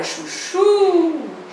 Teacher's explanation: não é a penúltima é a última também a última sílaba é a tônica também é oxítona